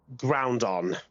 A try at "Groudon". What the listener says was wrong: Groudon. There's no M.